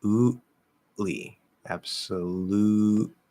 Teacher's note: We're probably going to do a glottal stop. It's just the easiest, quickest thing to do here. Lootly. So you ooh, stop it, push out the L.